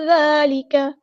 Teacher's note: کھڑا زبر آ گیا تو مد اصلی کریں گے، کاف کی زبر کو لمبا نہیں کریں گے